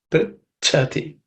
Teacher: In the last line, in the prichati, the cha is a compound consonant, and that the second letter is cha, which is the second letter in the cha varga. It has to be aspirated.